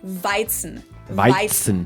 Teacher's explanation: But to get back to Hefeweizen, for English native speakers, the tricky parts here are the W, which in German is pronounced like an English V sound, v, and the Z is pronounced like a TS sound. So we say Weizen.